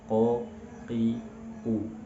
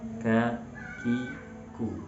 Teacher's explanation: Bedanya qaf pangkal lidah bertemu dengan langit-langit lunak, kaf sedikit maju ke depan pangkal lidahnya menyentuh langit-langit antara yang lunak dan yang keras.